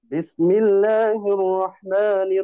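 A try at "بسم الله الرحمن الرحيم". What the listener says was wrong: নাকের মধ্যে পড়াটা না যায়, হ্যাঁ, স্পষ্ট। নাকের মধ্যে পড়া গেলে সুন্দর শোনাবে না। একটু ছেড়ে পড়েন, ঠিক আছে?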